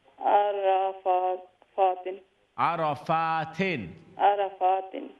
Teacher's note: फा के ऊपर लॉन्ग फतह है, इसको भी लंबा करेंगे